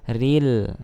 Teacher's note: di sini ro-nya tarqiq ya, karena dia ro berharokat kasrah.